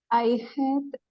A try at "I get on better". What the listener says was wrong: No es het. No es het. Get.